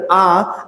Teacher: আ যখন উচ্চারণ করছেন, জিহ্বা একদম ফ্ল্যাট হয়ে নিচে নেমে গেছে না? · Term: নিম্ন স্বরধ্বনি